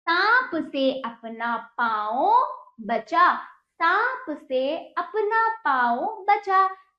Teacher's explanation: हमने चंद्र बिंदु का उच्चारण करते हुए पूरा मुख भी खोला और नाक का भी प्रयोग। इसमें पूरा मुख खुलेगा बच्चों, जब इसका उच्चारण करोगे आपका मुख पूरा खुलेगा, आपको पूरी तरह से इसको खोल के बोलना पड़ेगा।